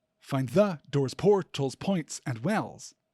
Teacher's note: We don't usually stress the word the like that.